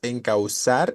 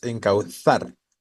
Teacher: es más como una cuestión interdental cuando pronuncian la z como poner la los la lengua entre los dientes encauzar no